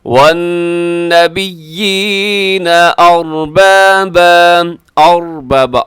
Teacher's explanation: را موٹا ہے کیونکہ را ساکن ہے، اس سے پہلے زبر ہے، تو اس صورت میں را کیا ہوگی جی، را پر پڑھی جائے گی، موٹی پڑھی جائے گی.